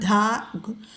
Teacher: ദ എന്ന മൃദുഅക്ഷരവും ധ എന്ന ഘോഷവും, അതുകൊണ്ടാണ് ധ എന്ന് പറയുന്നത്. ഘോഷം വരുന്നുണ്ട് അതിൽ.